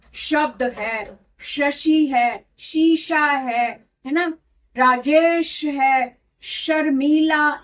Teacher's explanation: इसका तरीका क्या है कि दोनों दांतों को जब हम एकदम जोड़ते हैं तब सा निकलता है। जब दोनों के बीच में थोड़े सा स्पेस रखकर हम बोलते हैं दोनों दांतों के बीच में से हवा बाहर की तरफ थ्रो करते हैं, तब श निकलता है।